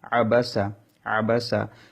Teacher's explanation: আইন কন্ঠ মাঝখান থেকে উচ্চারণ করার চেষ্টা করবেন